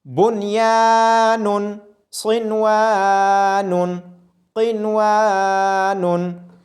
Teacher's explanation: اظہار مطلق کرتے ہوئے نون کی آواز ظاہر ہوگی اور نون ساکن پہ غنہ بھی نہیں ہوگا